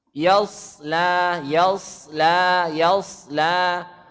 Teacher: La itu tipis, jangan dibaca lo.